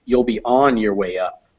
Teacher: On the first sentence, you want to put the stress in the sentence falls on the word on.